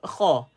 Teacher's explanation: Dia mesti vowel O. Dan dia duduk di hujung kerongkong. Dekat-dekat dengan nak tekak hati kita, tuan-tuan.